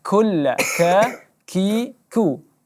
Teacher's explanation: Angin kaf dijaga, dia ada seperti angin tapi tidak terlalu banyak juga tidak terlalu sedikit.